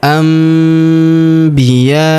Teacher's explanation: nun sukun bertemu huruf bi, maka nun sukunnya melebur ke huruf bi. Kita tahan dan kita dengungkan 2-3 harokat. Anbiya. Nun sukunnya berubah menjadi mim ya.